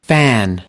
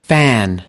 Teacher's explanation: International Phonetic Alphabet that represents the ah sound fan now see the UK pronunciation is using an ah fan U.S pronunciation is using an air fan